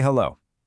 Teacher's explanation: You can feel that open vibrating resonant o sound, right?